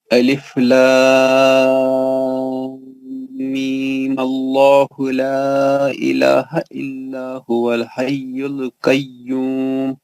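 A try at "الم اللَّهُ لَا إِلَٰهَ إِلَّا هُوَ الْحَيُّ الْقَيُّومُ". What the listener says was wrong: آپ صحیح نہیں پڑھے. آپ صحیح نہیں پڑھے. میم کا غنہ تو برقرار رہے گا نا. وہ نہیں کرا آپ نے.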